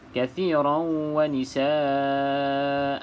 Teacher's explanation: bila kita nak berhenti pada kalimah nisa ini perlu kita sebutkan hamzah yang terakhir ini, sebab dia tanwin berbaris di atas. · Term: mad iwad